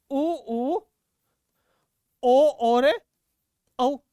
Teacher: जिनमें होट गोल गोल हो जाते हैं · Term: वृताकार